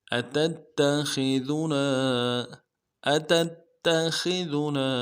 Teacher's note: خو کو موٹا ادا کریں گے. ذال کو باریک ادا کریں گے.